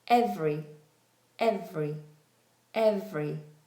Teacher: Rather than being three syllables, um it's now in most cases two syllables.